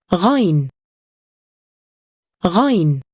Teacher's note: Its sound is similar to the sound you make when you gargle, a sound that comes from a point deep in the throat.